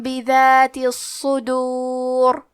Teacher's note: صاد پہ تشدید ہے تو ہم 2 حرف کے برابر صاد کو پڑھیں گے اور صاد حروف تفخیم میں سے ہے تو ہمیں یہ حرف کو بھاری آواز میں پڑھنا ہے.